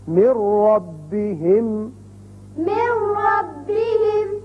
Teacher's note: را کی مثال نون ساکن کے بعد اب نون نہیں پڑھا جائے گا، میم را سے ملے گا